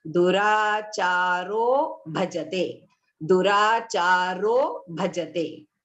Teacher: So a plus ha, that is the visarga, plus the first alphabet, that is the soft consonant bha. The ha goes and it becomes O.